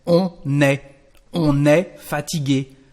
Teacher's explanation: On est fatigué, so don't forget the S, even if the verb is singular. There is a liaison, because we've got a consonant at the end of the subject.